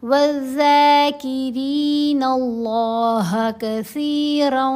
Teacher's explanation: لفظ اللہ کی لام کو موٹا پڑھنا ہے